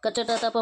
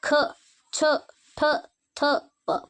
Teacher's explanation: ಹೆಚ್ಚು ಉಸಿರನ್ನ ನಾವು ಪಡ್ಕೋಬೇಕಾಗುತ್ತೆ ಇವುಗಳನ್ನ ಉಚ್ಚಾರ ಮಾಡಲು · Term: ಮಹಾಪ್ರಾಣ ಅಕ್ಷರಗಳು